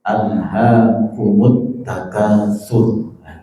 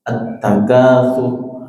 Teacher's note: Sur itu roknya kan dhamma, tapi disukun karena wakaf, di roknya tebal. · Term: roh yang tafkhim